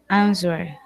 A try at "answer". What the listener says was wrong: Answer. Yeah, you don't have to say the W, okay?